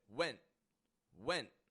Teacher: I put the tip of my tongue to the bump behind my teeth but I do not release the sound so that's step number one stop the sound with your glotus